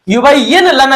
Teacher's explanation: नून साकिन को हमने नहीं पढ़ा, बल्कि या को डायरेक्ट हमने लाम के साथ मिलाया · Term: इदगाम बिला गुन्ना